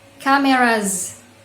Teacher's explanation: Ketika kita tambahkan S pada endingnya, maka bacanya cameras. Nah, kenapa cameras dibaca z? Karena kamera itu berakhiran dengan vowel sound atau bunyi vokal